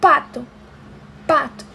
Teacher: vocês não vão sentir vibração quando vocês falam